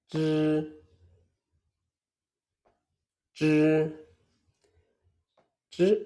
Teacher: Zhi is a retroflex sound. Your tongue should curl slightly backwards. The tip of the tongue touches the hard palate. The roof of your mouth slightly behind the teeth.